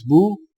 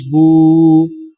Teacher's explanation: سیدھی پیش ہونٹوں کو گول کر کے بغیر کھینچے اور جھٹکا دیے پڑھیں، جبکہ الٹی پیش ہونٹوں کو گول کر کے تھوڑا سا کھینچ کر پڑھیں